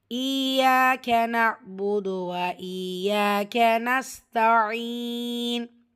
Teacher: ஈயாக யால ஷத்தா அழுத்தம் கொடுக்கணும். கூடவே அலிஃப் மத்தா 2 ஹரக்கத்தில் நீட்டம் கொடுக்கணும்.